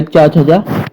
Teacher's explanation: जो हमारा चा वर्ग है, चा छजा, ये हमारा तालु के अंतर्गत आता है। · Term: तालव्य ध्वनियां